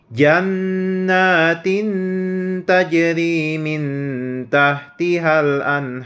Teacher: tanwin bertemu dengan huruf ta dan nun sukun bertemu dengan huruf ta. Maka harus didengungkan dengan membaca 2 harokat. Nah, itu ikhfa.